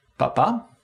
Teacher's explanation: The onset of voicing follows very closely after unvoiced consonants, papa. And the vowels are all at quite extreme positions and are monophthongs.